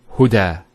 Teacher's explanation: There's the elongation as well, because the fatha followed by an alif. If this wasn't there, it will be huda, but huda with the alif.